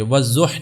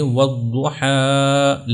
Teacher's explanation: کھڑا زبر کو ساکن نہیں کیا جائے گا، اس کو اسی طرح لمبا کیا جائے گا · مثال کے طور پر والضحی، اب دیکھیں یہ جو ہا ہے یہ آخری ہے، کیونکہ یا کے اوپر کوئی حرکت کوئی زبر زیر پیش نہیں ہے تو ہا ہی آخری حرف ہے اور اس کے اوپر کھڑا زبر ہے، تو ہم اس کو ساکن نہیں کریں گے، والضح نہیں پڑھیں گے، والضحی لمبا بھی کریں گے جتنا ہوتا ہے ایک سے دو الف